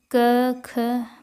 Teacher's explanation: क, ख बोलेंगे तो स्वर तंत्रियों में कंपन कम होता है। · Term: अघोष